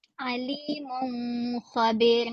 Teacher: Tidak jelas pun nun tu. Sebab nun tu dimasukkan ke dalam huruf kha. Itu sifat idgham bukan sifat izhar.